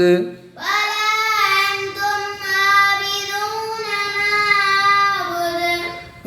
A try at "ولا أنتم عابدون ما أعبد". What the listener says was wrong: आपने फिर माद लम्बा करना छोड़ दिया।